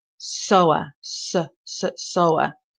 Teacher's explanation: the stress is on the first part of the word